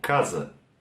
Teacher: La S se hace un sonido como la Z del inglés, pero lo que tenemos que atentar acá es la A al final, que se queda un poco más bajo, como casa.